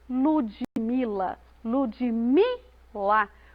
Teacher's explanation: o me é pronunciado com mais ênfase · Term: sílaba tônica